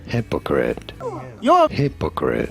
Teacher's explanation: you do want to stress on the first syllable